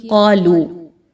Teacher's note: آمن الناس، آگے دیکھیے قالو، قاف زبر الف قا، 2 الف کے برابر اس کی حرکت کو رکھیں گے اور لو، یہاں پر بھی بڑی مد آ گئی اور حمزہ اگلے کلمے کے شروع میں آ رہا ہے، اگین مد جائز منفصل ہے، 4 سے 5 حرکت کے برابر لمبا کر کے کھینچ کے پڑھیں گے